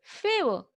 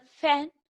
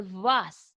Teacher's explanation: The English sounds f as in the word fan, or the sound v as in the word vas are labiodental sounds produced when the lower lip comes in contact with the upper teeth.